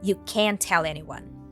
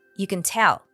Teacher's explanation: when the word is negative it is usually stressed and you can clearly hear the a sound you can't tell anyone when it is positive it's usually reduced